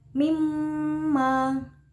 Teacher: Ada bacaan gunah musyaddada yaitu mim ditasjidkan, jadi membacanya harus ditekan dan didengungkan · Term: ghunnah musyadadah